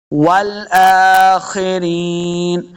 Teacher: خا کو موٹا پڑھیں گے، خا حروف مستعلیہ سے ہے